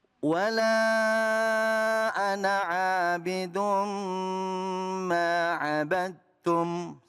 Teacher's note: Memang betul ada alifnya, tapi alifnya tidak dibaca panjang. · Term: dipendekkan